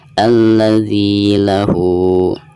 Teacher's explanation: Perhatikan di sini ada ha domir lalu berhadapan bukan dengan huruf hamzah, maka dihukumi mad silah qasirah dan dibacanya 2 harokat ya.